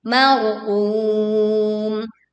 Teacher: ra sukun didahului fathah dibaca dengan suara yang tebal, kemudian berwaqaf di marqum panjangnya 2, 4 sampai 6 harokat.